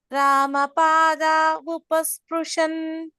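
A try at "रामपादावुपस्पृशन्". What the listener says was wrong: Now I'm hearing Bakaraha there. And then Ramapada Upasprishan.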